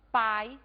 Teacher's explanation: encontramos na mesma sílaba o fonema vogal A mais o fonema semivogal I. A esse encontro nós vamos chamar de ditongo.